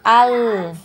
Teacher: dialirkan lagi lam sukunnya, jangan sampai memantul ya. Nah, ada pantulan al.